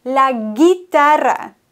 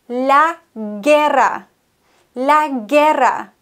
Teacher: Das U wird nicht ausgesprochen, wenn wir die Kombination G-U-I oder G-U-E haben.